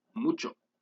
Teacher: is pronounced by pressing your lips together and allowing air to pass through your nose and making noise with your vocal cords · the voice bilabial nasal consonant and is pronounced by pressing your lips together and allowing air